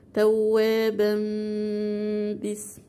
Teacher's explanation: تمام كده، لان طبعا برضو التنوين جه بعد حرف الباء، والباء من حروف الاقلاب، يبقى تقلب الفتحة الثانية الى ميم وتنطقيها ميم مع مراعاة الايه؟ الغنة